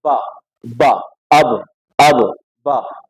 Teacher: ہونٹوں کا اندرونی حصہ ٹچ ہو آپس میں